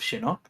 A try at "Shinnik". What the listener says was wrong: Yeah, it's Shinnik with an I.